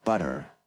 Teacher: in the middle of American words, the T is pronounced as a D, like butter.